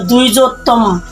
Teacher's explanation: অন্তজ ব সমান সমান কি উচ্চারণ হয়, ও অথবা ওয়া এর মতো উচ্চারিত হয়